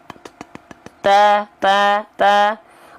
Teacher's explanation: Nah, bunyinya itu percikan nafasnya nggak kedengeran. Kenapa? Karena kehalangin sama bunyi fathahnya. · Hams itu artinya mengalir nafas, tapi pengkhususan untuk dua huruf, yaitu huruf ta dan huruf kaf, dia hanya berupa percikan nafas saja. Jangan sampai lebih dari kadar percikan. Kalau sampai lebih dari kadar percikan disebutnya takaluf.